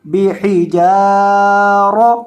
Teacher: रॉ के ऊपर ज़बर है, रॉ को मोटा करेंगे